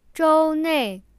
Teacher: 周, the first tone, means week, and 内, the fourth tone, means within.